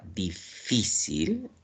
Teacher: Si la sílaba tónica está en la penúltima, como la palabra difícil, esto es una palabra paroxítona o también conocida como grave o llana